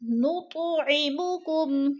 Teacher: انما نطعمکم، تو پہ قلقلہ ہے، حروف قلقلہ میں سے ہے اور ساکن ہے تو اس کو ہلا کر پڑھنا ہے